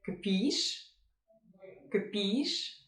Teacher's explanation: Since it's a question, the intonation goes up